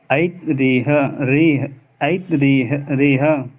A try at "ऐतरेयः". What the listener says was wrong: ऐतरेयः। नहीं, ऐतरेयः। आपका ता हलन हो रहा है।